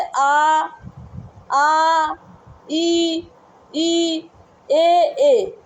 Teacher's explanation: मतलब जिन स्वरों के उच्चारण में ओठ गोलाकार नहीं होते हैं वो अभव्रत मुखी स्वर कहलाते हैं।